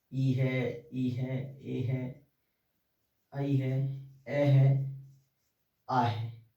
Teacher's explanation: इनको जब हम बोलते हैं तो हमारे ओष्ठों की आकृति गोल नहीं होती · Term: अवर्तमुखी